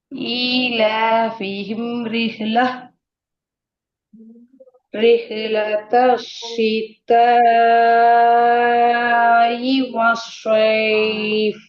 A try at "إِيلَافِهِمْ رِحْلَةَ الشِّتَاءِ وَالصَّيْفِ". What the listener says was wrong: அதுல ஈ தான் வருது. சீத்த ஈ, சீத்த ஈ என்று தான் நம்மளோட ஓதல் வருது. அது பிரச்சனை.